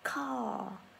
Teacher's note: Thế nên từ âm ca mình sẽ bật hơi mạnh lên một chút ạ